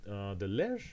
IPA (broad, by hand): ler